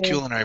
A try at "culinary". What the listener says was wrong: It's not culinary. There's no Q or U in it.